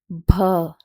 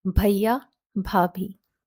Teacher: The B sound here is aspirated. By aspiration, we mean that a puff of air is thrown out while pronouncing this letter. Bh. So if you place your palm in front of your face and you say this sound, a puff of air is thrown or felt on your hand.